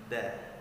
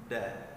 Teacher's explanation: Baik, selanjutnya kita masuk ke dalam huruf dal. Huruf dal, makharijul hurufnya yaitu ujung lidah kita bertemu dengan urat gigi atas kita